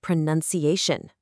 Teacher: when it becomes a noun, the sound changes completely. It becomes pronunciation with a nun sound right in the middle.